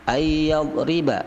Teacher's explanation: nun mati bertemu ya, itu namanya idgham bi gunnah. Yadriba, dot itu ditekan saja, yadriba, bukan qalqalah.